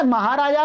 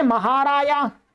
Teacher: तो स्पृष्ट प्रयत्न ईशत पृष्ठ में परिणत हो जाएगा और फलस्वरूप जकार यकार रूप धारण कर लेगा। जकार क्या कर लेगा, यकार बन जाएगा। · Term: अर्धक दोष